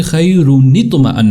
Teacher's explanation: چونکہ وہ خیرن اس وقت تھا کہ جب نون ساکن تھا، جب نون کو ہم نے زیر دے دی تو وہ خیرن سے خیرنطمئن بن گیا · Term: نون قطنی